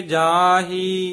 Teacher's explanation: ਜਾਹੀ ਜਾਂ ਹੁਣ ਖੂਬ ਨੱਕ ਦੇ ਵਿੱਚ ਬਿੰਦੀ ਆਏਗੀ